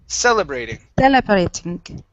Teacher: Our stress is at the very beginning.